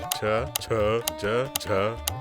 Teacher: ನಾಲಿಗೆಯು ಬಾಯಿಯ ಮೇಲ್ಚಾವಣಿ ಅಂದರೆ ತಾಳವನ್ನು ಮುಟ್ಟಿದಾಗ ತಾಲವ್ಯ ಪಲಾಟಲ್ ಎಂಬ ಅಕ್ಷರಗಳು ಹುಟ್ಟುತ್ತವೆ